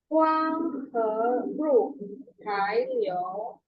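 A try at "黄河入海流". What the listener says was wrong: Sedikit saja untuk nada 3 hai. Jadi dia agak turun ya, karena sesuai tandanya dia turun ke bawah, baru nyambung sampingnya. Huang he ru hai liu. Ya, huang nada 2 ya. Huang he ru hai liu.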